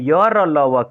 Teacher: अब य र ल व क्या है, यह अगर प्राण की बात करते हैं तो अल्प प्राण है, और घोष सघोष की बात करते हैं तो सघोष है, ये सघोष ध्वनि है।